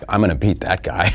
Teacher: The speaker stress on word beat in this sentence.